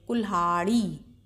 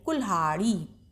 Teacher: हा के संग ही ला का भी उच्चारण कीजिए, और ला की ध्वनि हल्के से आएगी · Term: आधा ला